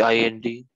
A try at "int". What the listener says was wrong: That is int. You pronounce this just like int. It's not INT, int.